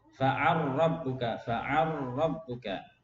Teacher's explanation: Di sini lam ketemu ra mutaqariban, diidghamkan juga.